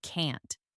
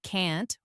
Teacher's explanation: Do they say can't with a longer a sound like in father or can't with a shorter a sound like in cat?